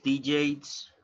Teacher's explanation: if you focus on the last sound, it's voiced.